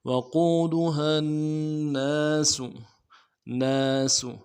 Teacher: نون کے بعد الف مدہ ہے، ایک الف دال میں کھینچیں گے، سین کی سیٹی کو واضح کریں گے۔